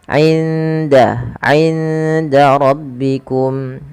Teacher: suara indanya nun sukunnya disamarkan ke huruf dal.